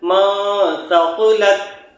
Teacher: یہاں دیکھیے نون ساکن کے بعد سا آ گیا ہے تو نون کی آواز کو ناک میں چھپا کر پڑھیں گے